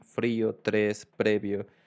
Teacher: you don't have to vibrate. It's just like a sound of an L and an R at the same time.